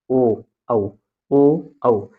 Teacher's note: कंठ से आवाज निकलता है। होठ आपस में गोल होता है। ओ औ हो जाएगा कंठोष्।